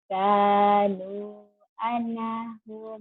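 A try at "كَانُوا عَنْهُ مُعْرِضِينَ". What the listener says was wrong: ane, jangan ane, anhu. Jangan ada e-nya, yo.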